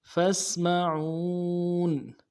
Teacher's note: فا کو سین کے ساتھ ملانا ہے، سین میں سیٹی کی آواز جاری رہے گی، اور عو میں واو مدہ ہے، عو ایک الف مقدار میں کھینچیں گے۔